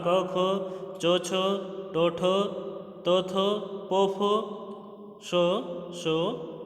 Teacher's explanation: जिन व्यंजनों के उच्चारण में स्वर तंत्रियों में कंपन न हो उन्हें कहेंगे अघोष व्यंजन